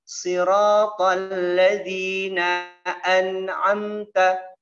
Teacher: tidak boleh an'amta di mulut, ya, dimasukkan ke hidung sedikit, ya. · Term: gunnah